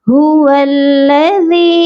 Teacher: वाव को लाम मुशद्दद के साथ मिलाया जाएगा